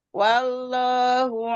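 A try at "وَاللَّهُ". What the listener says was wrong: Lamzul jilalahnya kurang tebal.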